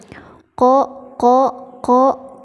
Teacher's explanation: Makhraj huruf qaf itu di pangkal lidah dengan langit-langit atas.